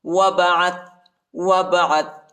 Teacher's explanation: واو کو با کے ساتھ ملائیں گے اور الف نہیں پڑھا جاتا، الف کے اوپر حرکت نہیں ہے، اور عین کو تا کے ساتھ ملائیں گے۔